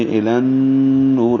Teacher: الی النور میں لام کو نون سے ملاتے ہوئے غنہ کریں گے. الی النور آواز ناک کے باں سے ملے جائیں گے 2 حرکات تک.